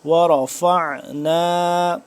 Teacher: حلق کے درمیانی حصے سے عین کو اور گلا کھینچ کے